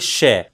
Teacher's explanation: जीभ तालु के पास चली तो गई उसको स्पर्श नहीं कर रही है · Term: उष्म व्यंजन